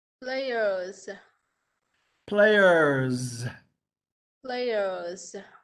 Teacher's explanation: the S sounds like a Z